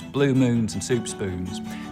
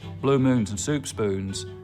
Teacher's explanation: Now, one thing that sets a lot of Texans apart from other Southerners is that there's a lot less goose fronting. So the tongue stays further back through that whole vowel sound instead of coming forwards